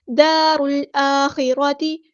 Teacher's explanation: لام یہاں پر لامی قمری ہے، اس کو ظاہر کریں گے · دار الآخرۃ، الف پہ کھڑا زبر ہے تو مد اصلی ہوگی، ایک الف کے برابر لمبا کریں گے